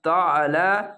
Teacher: আইনটিকে মোটা করে গলা চিপে পড়বেন